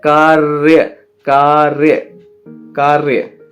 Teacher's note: तो का पे आका डंडा, रा पे हलंत लगेगा, कार्य, कार्य बोलते में रा जो है ना वो का के साथ सरक जाता है।